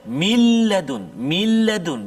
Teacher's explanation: Contoh, min ladun, maksudnya bunyi nun tu ke dalam lam tu masuk kedua-duanya, zat dan juga sifat, komplit masuk dia, sempurna masuk dia, kan? Min ladun, jadi tak ada bunyi nun langsung dah, tak ada min salah, min ladun terus pergi lam, min ladun, kan? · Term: idgham kamil